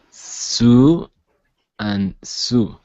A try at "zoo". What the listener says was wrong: They sounded alike to me, so I need you to hear. Imagine you're a bee. I want you to say zzz.